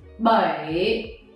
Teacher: have is my by this one see the question time so you have to raise your voice lower it and then make it a little bit higher at the end so it's something like this by in the difference by okay